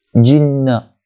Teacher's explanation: jinna dengung 2 harakat sebab nun yang musyaddadah